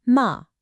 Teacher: And finally, we've got the assertive tone. This one is just a sharp quick drop from a high pitch to a low one. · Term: fourth tone